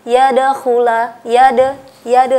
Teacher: Qalqalah itu artinya getaran suara yang menimbulkan pantulan. Jadi ketika kita membaca dal yang mati atau dal yang sukun, kita memantulkannya. Yadakhula, yade seperti ya, y-a-d-e, seperti itu ya. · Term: huruf qalqalah